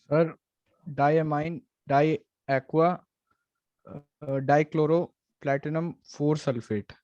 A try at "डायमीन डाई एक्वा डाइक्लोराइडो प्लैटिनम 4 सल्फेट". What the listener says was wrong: मैंने आपको बोला था क्लोरो नहीं बोलना, क्लोराइडो बोलना है।